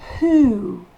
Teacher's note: le O se prononce OU, OU long, d'où les deux petits points.